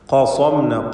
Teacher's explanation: ഖാഫിനും സ്വാദിനും തഫ്ഖീം നൽകി സ്വരഭാരത്തോടെ ഉച്ചരിക്കണം